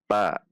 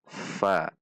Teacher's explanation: perhatikan sifat dan makhraj huruf Fa tidak dibaca Pa namun Fa bibir atas tidak ikut dalam titik makhraj Fa